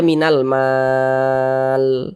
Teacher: Huruf lamnya kita sukunkan, kita matikan. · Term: mad arid sukun